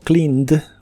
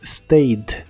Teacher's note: Y para todos los demás verbos que no terminan con ninguno de los sonidos anteriores, cuando le agregas ed para hacer la versión del pasado, esa ed se pronuncia solo como D, sin la E.